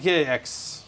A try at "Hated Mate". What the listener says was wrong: Hated Mate. Hated Mate. Mate. Just don't read the X's. Silent X's. Silent X's.